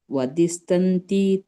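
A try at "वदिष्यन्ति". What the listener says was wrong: ಅಲ್ಲ, ವದಿಷ್ಯ ಇದೆ ಅಲ್ಲಿ ನೋಡಿ. ವದಿಷ್ಯ ಇದೆ, ಶಕ್ಕೆ ಯಾವತ್ತಿದೆ.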